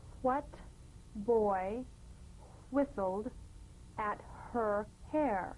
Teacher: words that begin with WH are pronounced H w